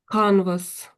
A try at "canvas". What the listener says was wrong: Yes, canvas. That's it. Spot on. That's good.